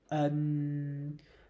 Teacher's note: so the /ơ/ is very short but the /N/ is very long on the second word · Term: short sound